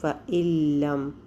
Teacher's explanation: تو لام جو ہے وہ ہمیں پتہ ہے کہ یرملون میں سے ہے، تو یہاں پر ادغام بلا غنہ کامل ادغام ہو جائے گا